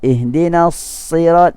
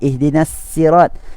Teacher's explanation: kita biasa yang kita baca ihdinas sirat dengan sad. Ada bacaan lain dengan baca dengan sin, ihdinas sirat.